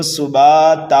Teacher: اگر دو زبر کو ہم ایک الف سے بدلیں گے تو پڑھیں گے اس کو سباتا، ایک الف کے برابر کھینچیں گے